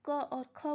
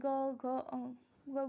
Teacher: बोलने में क्या हो रहा है, हमारे गले में घर्षण हो रहा है। तो ये क्या है, घोष और सघोष, इसको हम बोलते हैं।